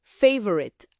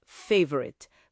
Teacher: A sílaba tônica é a primeira